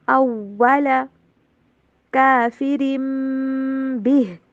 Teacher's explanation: جو تنوین کی آواز وہ نہیں آئے گی بلکہ میم کی آواز سے چینج ہو جائے گی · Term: اقلاب